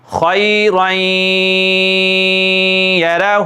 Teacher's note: پیش ہو، خیرین یرہ، یہاں پر دو زبر تنوین ہیں تو تنوین کے بعد حروف یرملون میں سے یا آ رہی ہے، تو ہم ادغام کر رہے ہیں غنہ کے ساتھ